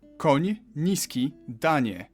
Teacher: You start with an N and soften it to ni.